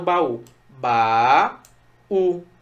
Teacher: Nesse hiato rolou a sílaba tônica justamente no U, por isso o baú tem acento, tá?